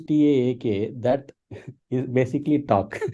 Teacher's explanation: The L is kind of missing, right? You don't see the sound of L in the when you pronounce the word talk.